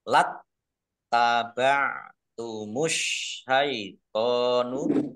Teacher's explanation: alif lam samsiyah karena tidak dibaca. Langsung masuk ke huruf berikutnya yaitu shin, ditandai shinnya ada tasdidnya.